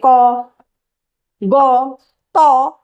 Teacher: স্পষ্ট ও অল্প প্রাণ মানে অল্প শ্বাস লাগছে।